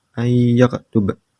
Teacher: Yang keempat ayyaktub, idgham bigunah karena nun mati atau tanwin bertemu dengan huruf ya dan dibaca dengung